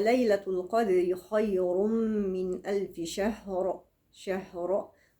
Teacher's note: ووقفت على راء مفخمة